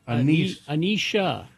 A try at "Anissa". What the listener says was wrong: It doesn't have an H. I know it sounds that way over the phone. It's Anissa.